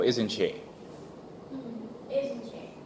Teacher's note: if it has the falling tone, it means you don't want the answer.